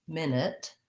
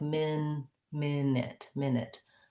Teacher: the noun has first syllable stress